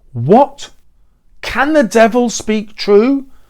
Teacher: it sounds trochaic because the first what is stressed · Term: trochaic stress